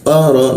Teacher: qa di siku tenggorokan, lidahnya dinaikkan, rongga udara terkunci sehingga tidak ada hembusan udara